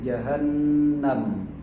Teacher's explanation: Makhrajnya gunnah itu kan di rongga hidung. Jadi jahannam harus ada getaran naik ke hidung ketika menyebut huruf mim. Baik itu sukun ataupun tidak sukun, harus ada naik ke hidung itu.